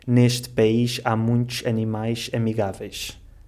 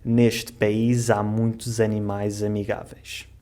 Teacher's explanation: Um S entre duas vogais. E, portanto, esse S vai-se ler Z.